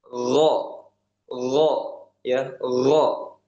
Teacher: gin ini dia tidak hanya G ya, tidak hanya g saja tapi ada H-nya. Gh gitu g ya.